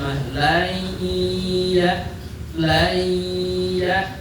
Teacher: Masukkan suara huruf nun pada huruf ya. Ngelebur enggak kedengeran nunnya mah laya. Maka disebut cara baca idgham yang tam. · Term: Idgham yang sempurna